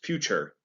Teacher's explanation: the t actually makes more of a ch sound and the e at the end is not pronounced